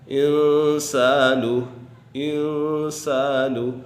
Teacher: یہاں پر نون ساکن کے بعد سین حروف اخفا میں سے آ گیا ہے تو یہاں اخفا کا قاعدہ لگ رہا ہے اور نون ساکن میں غنہ ہوگا